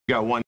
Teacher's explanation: 语 速 特 别 快 的 时 候， 不 摆 姿 势， 把 T 直 接 扔 了， 也 不 是 不 行。